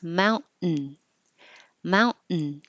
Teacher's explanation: When the N comes after the T in the unstressed syllable, then when your tongue goes up to the T position, mount, it's the same as the N position. So just hold it there and make the N noise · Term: syllabic